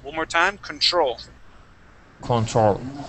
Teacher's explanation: The accent goes at the very end.